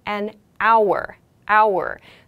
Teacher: following noun begins with a vowel sound we use an here yes we have the consonant H beginning this word but it makes a vowel sound an hour hour so it's like the H doesn't make that